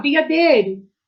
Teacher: O som da vogal E é muito mais forte que do I. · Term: semivogal